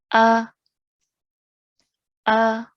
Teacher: I'm making a sound that lasts for one second or one count it's a very short sound